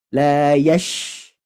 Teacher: kalau huruf shin itu harus ada sifat tafashi, artinya menyebar udara di mulut.